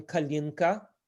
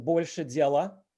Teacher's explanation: a is reduced to the schwa sound